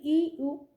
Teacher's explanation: উচ্চ স্বরধ্বনি ই ও জীবটা উপরে থাকছে।